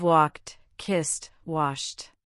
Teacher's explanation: Think of walked, kissed, washed. Your vocal cords don't vibrate.